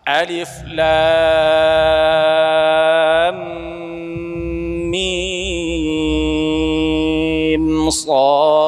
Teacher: kita panjangkan lam kita setelah panjang enam harakat masukkan ke mim ya. Dengungkan. Kemudian shad dipanjangkan diakhiri dengan qalqalah.